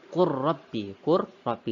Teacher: Jadi lamnya kita tidak baca ya. Lamnya tidak dibaca, langsung dibaca ke huruf ro-nya.